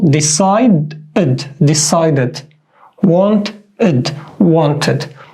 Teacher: the only case when we say it like ed is after d or t. Just in these 2 cases, we say it like full ed.